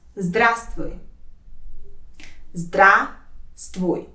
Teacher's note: There are two syllables in this word, and the first one is stressed.